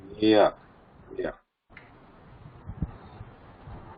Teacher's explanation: compared to cha, there is a lesser degree of touch there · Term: ishat sprishta